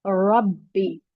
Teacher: यहाँ रॉ को हम हेवी पढ़ेंगे और बा के साथ मिलाकर पढ़ेंगे क्योंकि बा पर तशदीद है